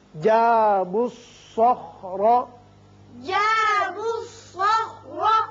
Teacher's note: یہ دو الف زائدہ ہیں اور لام نہیں پڑھا جائے گا